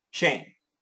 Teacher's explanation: So it's still a long A. It's still a long A. It's just not diphthonged.